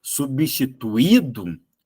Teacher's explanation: Só que isso não é ditongo. Esse I não é semivogal, ele é vogal. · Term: hiato